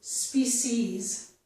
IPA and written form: spisiz (species)